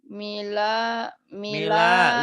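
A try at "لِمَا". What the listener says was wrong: Mila. Lima, lima, lima, lima. Terbalik.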